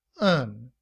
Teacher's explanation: However, in reduced form, than becomes un. The schwa, which sounds like and the letter n.